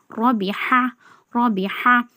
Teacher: ராக்கு ஜபர் இருக்கு தடிமனா ஓதணும்